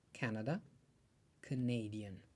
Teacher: Kur themi kanadez theksi spostohet një rrokje më tej.